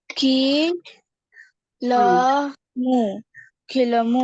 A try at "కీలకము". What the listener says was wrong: కీలము కాదు, మధ్యలో కాయ ఎగ్గొట్టావు. కీలకము. మధ్యలో కావు.